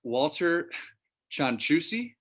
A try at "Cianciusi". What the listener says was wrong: Yes, with a C, with a S instead of a C at the end.